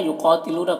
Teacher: قاف کو پر پڑھیں گے حروف مستعلیہ میں سے